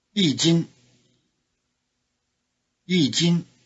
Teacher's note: Notice that the high tone of 一 changes to falling tone before the high tone of 斤